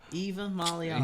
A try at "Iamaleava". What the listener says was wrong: No, it's not. There's no V in it. Iamaleava.